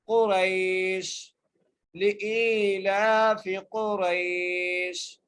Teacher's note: کے اوپر پیش ہیں اور قاف کو بغیر کھینچے پڑھنا ہے، را کو یا سے ملانا ہے، یہاں پر حرف لین کا قاعدہ لگ رہا ہے